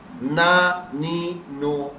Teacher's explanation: اگر ہم نے یوں پڑھ دیا نا نی نو، آپ فوراً چونکیں، نہیں حروف مدہ نہیں پڑھا ہے ہم نے، حروف مدہ نہیں کرا، کھڑی حرکات نہیں پڑھی، یہ تو پڑھی حرکات یا سیدھی حرکات پڑھ دی. نا نی نو یہ تو سیدھی حرکات ہے، ہمیں ان کو لمبا کر کے پڑھنا ہے.